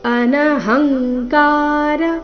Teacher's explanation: ಅನಹಂಕಾರ ಹ ಮೇಲೆ ಆಘಾತ